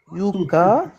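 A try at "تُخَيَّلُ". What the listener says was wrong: Tout, pas you, tout. c'est kha. C'est kha, tout kha. Tukhayya.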